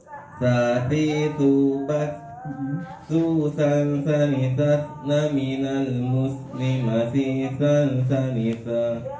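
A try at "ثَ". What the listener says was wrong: Nah, semakin ke ujung semakin ke hidung dia ya. Coba ikuti saya pelan-pelan ya. Nah, jangan takut keluar huruf ya, jangan takut keluar suaranya, keluarkan sudah, fullkan ya. Jadi ingat ya, bila perlu ditulis besar-besar di buku catatannya, kunci suksesnya orang belajar tahsin adalah berani mengeluarkan suara sekeras-kerasnya.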